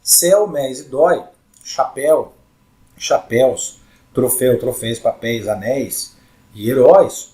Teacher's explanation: a primeira vogal é a mais forte, justamente por causa do acento, né? Então, dá aquela intensificada na pronúncia. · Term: ditongos